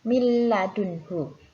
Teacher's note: huruf nun sukun bertemu dengan huruf lam, maka harus dimasukkan ke huruf lam juga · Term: idgham bila gunnah